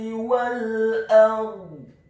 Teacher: Dalam hal ini adalah huruf hamzah atau alif. Dan huruf ra-nya dibaca sukun, tafkhim, dengan posisi bibir bawah kita agak tertutup dan posisi lidah kita di langit-langit atas